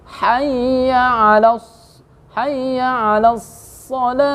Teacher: Jangan alas so, harus ditebalkan.